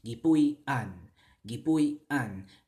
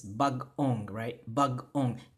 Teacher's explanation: There's a carryover sound, but there's an internal pause there too.